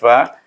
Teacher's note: Fi pun hamas, dia tak ada safir, fa.